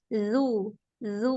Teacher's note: Jangan ada hamsnya. Dia jahar.